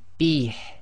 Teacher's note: if we're stopping here, effectively the ha with the kasra will go sakin, so this would be read as bih. Okay, so bih takes a bit of practice, got to bring the ha from the bottom of the throat, so just read the ha with the kasra as if it's sakin.